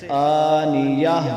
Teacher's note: وقف میں اس کو تا نہیں پڑھیں گے بلکہ ہا پڑھیں گے